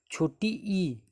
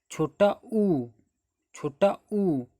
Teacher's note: अगर बोल के देखो छोटी ई जीभ ऊपर उठ रही है, बड़ी ई जीभ ऊपर उठ रही है, छोटा ऊ इसमें भी जीभ ऊपर उठ रही है, और बड़ा ऊ इसमें भी जीभ ऊपर उठ रही है। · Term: संवृत्त स्वर